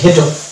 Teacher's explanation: American ইংলিশের ক্ষেত্রে দুটোরই উচ্চারণ মিলে মানে হয়ে যাবে ঘ